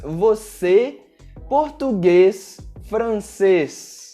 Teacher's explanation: Com o acento circunflexo, nós temos um som um pouco mais fechado